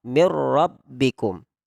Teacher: yang dimaksud dengan karironnah itu ditakrirkan, jadi bergetar. Jadi bergetar, tapi getarannya itu jangan berlebihan.